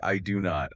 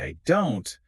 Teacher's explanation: But when I say I don't, my tongue just lightly taps the top of my mouth and the breath just it keeps flowing